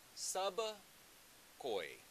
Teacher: this is a short e at the end of koi, instead of what it would normally be in modern standard Hindi, a long e